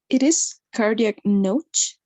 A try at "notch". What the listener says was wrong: Yes, notch, notch. It's like you were reading it in Spanish, notch.